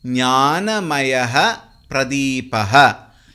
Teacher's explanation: Here the Visarga takes the form of F. Visarga followed by Pavarga. The Visarga will be pronounced as F.